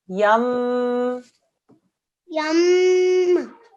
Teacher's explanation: It's a mim mushaddad, so a 2-second nasal sound.